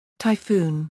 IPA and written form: taɪˈfuːn (typhoon)